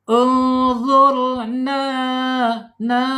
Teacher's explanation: Nah, di sini ada nun fathah menghadapi huruf alif ya, namanya mad asli atau mad th'i. Panjangnya dua harakat saja, tidak boleh banyak-banyak ya. Dua harakat atau satu alif atau dua ketukan.